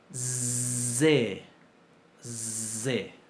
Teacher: Si a la S, que es sorda, le pongo acción de las cuerdas vocales, es, me queda una zain. Lo podemos llamar el sonido del moscardón o del mosquito, ¿verdad?